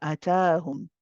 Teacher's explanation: Just make sure your timings are right. A and then ta. Ta is longer.